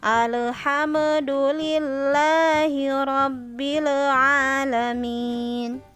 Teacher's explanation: ibu mengucapkan huruf sakinah yang dipantulkan yang seharusnya tidak boleh dipantulkan. Dalam pengucapan huruf lam mati dan mim mati ya. Tadi alham itu tidak boleh ya, itu salah karena huruf lam dan mim tidak termasuk huruf qalqalah. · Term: tawallud